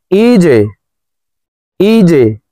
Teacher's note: জিম কলকলার হরফ নিচের দিকে ধাবিত করে ধাক্কা দিয়ে উচ্চারণ করব